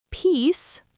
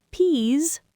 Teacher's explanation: Peace, unvoiced s, short vowel. Peas voiced Z long vowel.